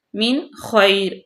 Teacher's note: نون ساکن کے بعد خا آ گیا حروف حلقی میں سے تو یہاں پہ ظاہر کریں گے